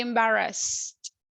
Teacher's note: the last sound is no vibration